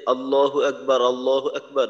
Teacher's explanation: আমরা তো জানি আল্লাহ শব্দের লাম মোটা হবে